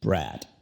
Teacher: Con la D no toques a los dientes como lo haces en español